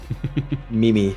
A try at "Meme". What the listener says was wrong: No, he put the emphasis on the second one, so it's Meme. Meme.